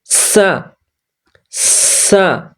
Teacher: পড়তে হবে আর যখন 2 নাম্বারটা পড়বেন এই 2 নাম্বার সা বেশি করে সিস বের করতে হবে পাতলা করে